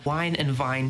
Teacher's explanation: Since v is not that common, I don't mind merging it with historic w. So now, wine and vine sound the same.